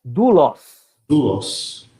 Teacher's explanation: esse ditongo, ele vai ser lido como U. Isso aqui vai ser lido como U.